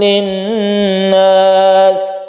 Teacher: Linnas ini kita dengungkan karena tasydid nun yang terbentuk dari idgham syamsiah. Ini idgham syamsiah.